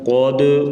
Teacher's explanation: قاف زبر دال قد، قاف کو موٹا پڑھیں گے، موٹے حروف سے ہے، اور دال ساکن ہوگی ہے، اس پر قلقلہ کیا جائے گا